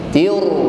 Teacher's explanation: Lalu kita getarkan dengan tafkhim, ya. Tir, ada getaran sedikit namun bunyinya tafkhim, tebal